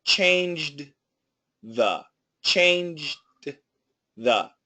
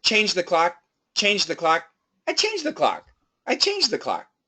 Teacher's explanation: we know that the dth can be linked together. And we also know that the J is a strong sound and the th is a weak sound.